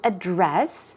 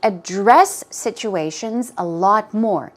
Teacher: the stress goes on the second syllable and it can be used as a verb.